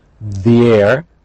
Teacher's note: these have been examples of linking we don't say this air they're linked but they're not Blended they're different sounds because we have a vowel and we have a different vowel